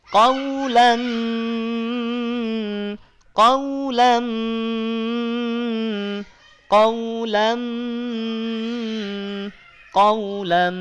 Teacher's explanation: Dengungkan dengan sempurna. Qaulam, suara keluar dari rongga hidung. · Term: dengung yang kamil